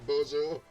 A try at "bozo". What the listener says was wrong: Bozo, but you you pronounce the Z in a very Spanish way. Bozo.